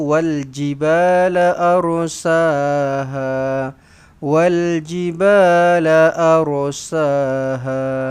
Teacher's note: Ra yang bersukun ini, ra yang mati ini dibaca dengan tebal. Kenapa? Sebab huruf sebelumnya berbaris atas. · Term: Ra ditebalkan